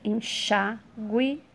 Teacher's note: sílaba tônica é a penúltima